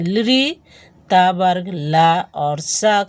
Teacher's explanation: जब बोलते हैं तो दांत में जीहवा सटती है स्पर्श करती है इसीलिए इसे हम कहते हैं दंत्य वर्ण दांत में स्पर्श करने के कारण यह दंत्य वर्ण कहलाता है यानी ल त वर्ग ल और स का उच्चारण स्थान दांत से होता का उच्चारण दांत से होता है।